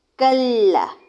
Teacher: کاف بھی باریک لام بھی باریک